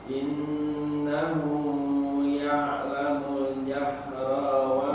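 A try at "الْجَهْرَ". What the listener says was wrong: Nah, jahro pakai ha besar. Jahro.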